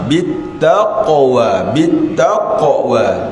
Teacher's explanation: qaf tu huruf yang sepatutnya dipantulkan. Kita tahu, maklumlah supaya huruf qalqalah ni dijaga.